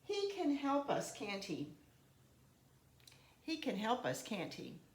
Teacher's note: if I'm going to use a falling tone in my tag here, it's going to kind of give the sense to you that I'm fairly sure about this. I'm fairly sure about this, and I'm kind of hoping that you will confirm that with me.